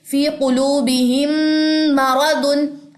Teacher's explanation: फिर मीम का देखें, फी कुलूबिहिम मरदुन, अब यहाँ पे मीम साकिन के बाद मीम मुतहरिक है, तो एक और कायदा भी हो रहा है इदगाम में शफवी, तो हमने यहाँ पे गुन्ना किया, क्लियर, क्योंकि मीम शद पे गुन्ना आ जाता है।